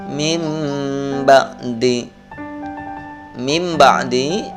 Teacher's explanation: Nun matinya dihilangkan diganti menjadi suara mim mati · membalik bunyi suara nun mati dan tanwin menjadi Bunyi mim mati ketika bertemu dengan satu huruf iqlab yaitu berupa huruf ba